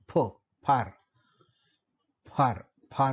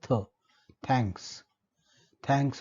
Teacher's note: तर इंग्रजीमधला फार मधला फ, फार, फार, फार मधला, आणि थँक्स मधला थ, थँक्स, थँक्स मधला थ, या दोन उच्चारांच्या वेळी आपल्याला हवा अडवली जाते, परंतु ती पूर्ण न अडवता थोडीशी फट राहिल्यामुळे त्या फटीतून बाहेर पडत असते. तेव्हा ती हवा मुखविवरामध्ये इतर अवयवांशी घर्षण करत असते, तेव्हा निर्माण होणारे ध्वनी जे आहे ते मराठीमध्ये श, श, स.